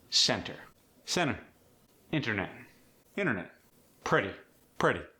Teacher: The T's are softer than in standard American English. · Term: The T sound